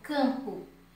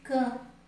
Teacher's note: Eles são dígrafos vocálicos porque quando eu pronuncio na palavra, por exemplo, campo, eu pronuncio o A com som nasal. Eu pronuncio o A com o som do nariz